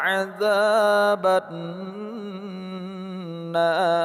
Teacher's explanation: Huruf nun berharakat tasdid kita gunnahkan atau kita dengungkan.